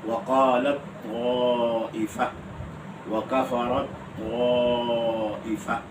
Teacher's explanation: یہاں تا کا وجود ختم ہے، یعنی تا کو طا سمجھ کر اور طا کا طا میں ادغام کر دینا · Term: تا کا ادغام طا میں